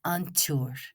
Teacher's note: 'Siúr' becomes 'an tsiúr': T is inserted before S in this case.